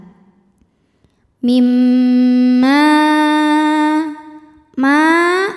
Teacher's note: bunyinya langsung bunyi m sambil kita tahan dengungkan mim ma ma ada hukum mad wajib muttasil sebab ada Mad